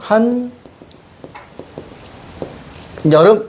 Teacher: 한 여름이라는 것은 보니까 없던 니은이 생겼습니다. 니은 첨갑니다. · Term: 니은 첨가